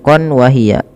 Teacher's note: Suara tanwinnya masuk ke waw sehingga waw dianggap bertasydid. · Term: idgham bi gunnah